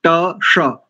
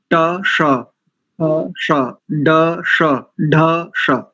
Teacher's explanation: जैसे ट श, जो प्रयास, जो स्थान ट अक्षर का है, ट वर्ग के प्रत्येक अक्षर का है, वही स्थान इस मूर्धन्य शकार का है। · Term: मूर्धन्य षकार